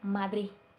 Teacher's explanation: no llega a terminar de pronunciar la letra D por completo. Se queda en un Madrid. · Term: debilitamiento de la D